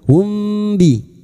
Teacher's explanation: samar di bibir kita samarkan bunyi mim sukun